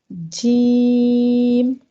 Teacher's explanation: पहले ज़बान का जो बीच वाला हिस्सा है वो तालु से लगता है, पहले ज़बान का जो बीच वाला हिस्सा है वो तालु से चिपक जाता है, उसके बाद जीम अदा होता है। अगर आप ज़बान के बीच वाले हिस्से को ऊपर के तालु के साथ नहीं लगाते तो जीम अदा ही नहीं होगा।